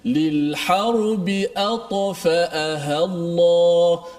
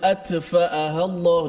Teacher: Huruf ta dia paling kuat kerana dia bukan setakat isti'la, dia ada itba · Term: qalqalah